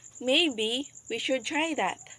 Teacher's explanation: in the word maybe our voice is rising and in the word that our voice is goes down the